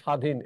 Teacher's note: বফলার কোন উচ্চারণ নেই